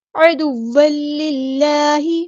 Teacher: عین کو وسطی لیکن مڈل تھروٹ سے ادا کرنا ہے